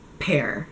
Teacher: when you take off the vibration, it sounds like a p and it's just a puff of air